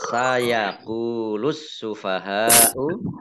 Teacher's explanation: Kemudian hak fathah alif mat tabi'i, tetapi karena bertemu dengan huruf hamzah dalam satu kata maka menjadi mat wajib muttasil. Mat wajib muttasil dibaca panjang 5 harokat.